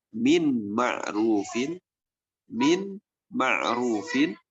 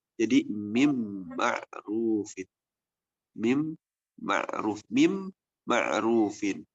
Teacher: ketika nun bertemu dengan mim ini harus melebur ke huruf setelahnya. Mim ini, nunnya berubah menjadi mim. Jadi mim ma'rufin. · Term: idgham